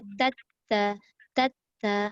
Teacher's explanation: Sebenarnya masa kita menyebut tata tu dia dah keluar angin tapi sikit.